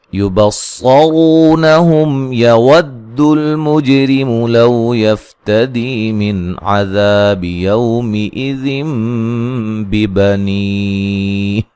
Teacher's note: صاد کو موٹا ادا کریں گے اور را کو موٹا ادا کریں گے